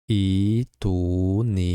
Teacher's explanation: Hamzadan soʻng sukunli qatʼiy hamzani talaffuz qilish tilga biroz ogʻirroq boʻlgani uchun sukunli qatʼiy hamzamiz oʻzidan oldingi vasl hamzaning harakatiga mos boʻlgan mad harfiga aylanib ketadi. Buni biz badal matham deymiz.